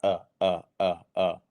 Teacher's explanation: it's a very quick staccato sound